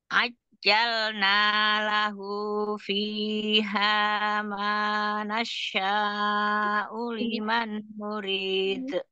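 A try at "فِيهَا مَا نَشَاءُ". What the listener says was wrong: Umi tadi dikata nasya nasya nah, seperti ada tasjid tuh. Itu mana tasjid tapi bacanya seperti ada tasjid coba bisa diulang ya jadi sekarang diulang dari fiha manasya fiha manasya nasya'u.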